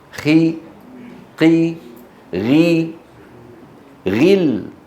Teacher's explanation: الغين والقاف والخاء لما تنكسر يعني ممكن السامع يظنها مرققة